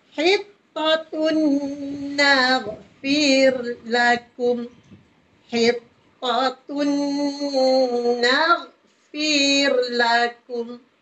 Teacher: Kita dengungkan dengan kadar 2 harakat. Jadi di situ tun tanwin bertemu dengan nun. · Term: idgham ma'al gunnah